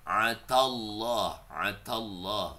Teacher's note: ainnya tetap ditenggorokan karena kan ain kan huruf tenggorokan